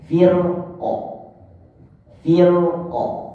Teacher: Kalau dibaca waqaf, maka dibaca tebal karena hilang alamat khilaf pendapatnya.